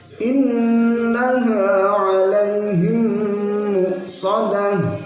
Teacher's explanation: innaha 'alaihim muqsadah, pakai shad bukan pakai shin